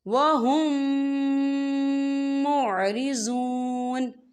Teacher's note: فریق منہم وَهُم مُعْرِضُونَ، یہ دیکھیں وَهُم، یہاں میم ساکن ہے، میم ساکن کے بعد پھر میم آ رہا ہے، یعنی مشدد والا میم آ رہا ہے، تو یہاں پر ادغام شفوی ہوگا۔ ہم پچھلے میم کو اگلے میم میں مدغم کریں گے اور یہاں غنہ بھی ہوگا۔